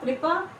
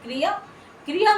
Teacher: कृपा छोटी ई की मात्रा बहुत हल्के से सुनाई दे, लेकिन क्रिया, क्रिया में छोटी ई की मात्रा बिल्कुल स्पष्ट सुनाई दे